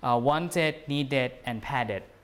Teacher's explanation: And the D becomes the id or ud after the T or the D, okay? Again, you have to insert a vowel just for ease of pronunciation, making the pronunciation easy.